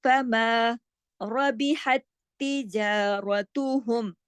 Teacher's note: रा मोटा पढ़ा जाएगा क्योंकि रा पे जबर है